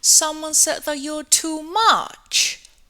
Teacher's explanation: she produced the sentence with a falling tone